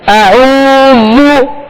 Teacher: واو مدہ ہے لہذا ایک الف کی مقدار میں کھینچنا ہے